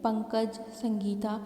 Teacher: तो जो कंपन होता है वह हमारे नाक में होता है · जब हम इनको बोलते हैं तो जो कंपन होता है वो हमारे नाक में होता है। अंग की जब ध्वनि हम बोलते हैं तो नाक में कंपन होता है, नाक से वायु बाहर निकलती है, इसीलिए इन्हें अनुस्वार कहते हैं। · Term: अनुसार